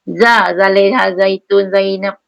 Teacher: Zai ni boleh berdesi, tak payah keluar lidah